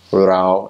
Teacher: in Thai, the word we, rao, is more of a flat tone. In Laos, it's more of a rising tone.